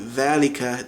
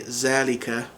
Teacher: So thal, it becomes a Z sound. So instead of saying dhalika, they would say zalika.